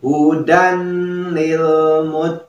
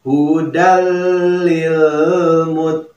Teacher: Nah, di sini ada tanwin ya, yaitu fathah tain bertemu dengan lam. Nah, ini hukumnya idgham bila gunnah ya.